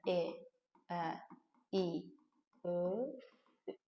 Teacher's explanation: İncə saitlər deyəndə dil gəlir önə. Səs müəyyən qədər incə tələffüz olunur.